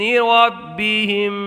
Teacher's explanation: ربہم کے با کو خوب جماؤ کے ساتھ ادا کریں گے، اس لیے کہ جب حروف قلقلہ مشدد ہوں تو انہیں خوب جماؤ کے ساتھ ادا کیا جاتا ہے۔ اور یہاں میم ساکن میں ادغام شفوی ہوگا۔